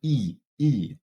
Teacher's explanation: that is the high front unrounded tense vowel